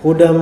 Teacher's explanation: hudam di sini idgham dengan tambahan gunah dengungan yang keluarnya dari khisum